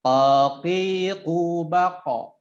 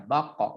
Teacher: Taqiqu baqa. Nah, ketika sukun dia memantul, ya, memantulnya menjadi tafkhim baqa, seperti ya, baqa bukan baqe, ya.